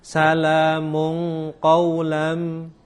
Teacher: Ini ada tanwin ketemu dengan huruf qaf. Maka tanwin ini disamarkan pada makhrajnya atau bacaannya huruf qaf, nanti menjadi eng. Salamun qaulam, lamanya kita menyamarkan, itu juga satu huruf atau dua harokat, jangan lama-lama. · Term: ikhfa